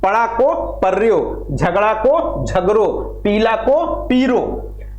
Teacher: ला और ड़ा के स्थान पर रा का प्रयोग किया जाता है।